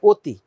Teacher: অ এর উচ্চারণ ও হয়ে গেছে, অতি হয়ে গেছে।